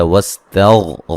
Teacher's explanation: غین کو موٹا ادا کریں گے، ہلانا نہیں ہے